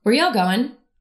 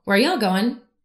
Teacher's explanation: my pitch fluctuates from mid to high to low